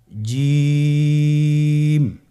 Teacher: আপনারা জিহ্বার মধ্যখানটা লক্ষ্য করুন এবং তার বরাবর উপরে তালুর সঙ্গে লাগান, এরপর হরফটি উচ্চারণ করুন, দেখবেন হরফটি শুদ্ধভাবে উচ্চারিত হবে।